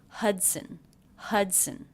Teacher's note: there's the schwa vowel in there as an unstressed syllable it's very fast sunson and when the schwa is followed by